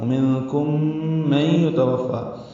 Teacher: میم ساکن کے بعد میم آنے کی وجہ سے ادغام ہے غننے کے ساتھ